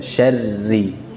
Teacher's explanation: Kalau syarril itu tebal, tipiskan.